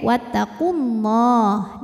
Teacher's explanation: karena ada wau sukun didahului dah maka panjang du harakat tapi jika diteruskan madnya gugur qofnya baca pendek